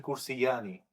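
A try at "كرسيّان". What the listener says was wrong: Yeah, so shadda, don't delete it.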